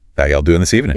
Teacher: You can hear how much slower it is. Much slower, right? And those vowels are often drawn out. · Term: Southern American accent